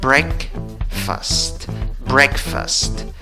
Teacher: la fuerza de voz va en la primera sílaba contando de izquierda a derecha no en la segunda · En la pronunciación solo tienes E. En la segunda sílaba, según el diccionario Merriam-Webster, en la escritura tienes una A. En la pronunciación tienes schwa, la que no es ni A, ni E, ni O, la que se duerme.